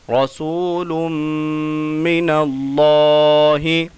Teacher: جب لام میں جو ہے میم کو ملائیں گے تو غنہ ہوگا